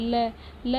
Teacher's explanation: ल जो है दांत से बोली जाती है, तो मतलब जो हमारा जीभ है वो दांत से चिपकता है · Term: दंत्य ध्वनि